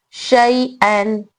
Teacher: यहाँ पर भी यालीन हो रहा है क्योंकि या साकिन से पहले जबर है, इसको जल्द पढ़ेंगे